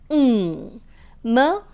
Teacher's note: M is known as a bilabial nasal since both the lips come together and for the articulation of the sound M for the articulation